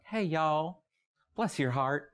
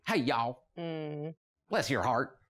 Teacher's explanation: the city accents are a little bit more soft they're softer a little more genteel and the rural accents are twangier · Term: Southern accent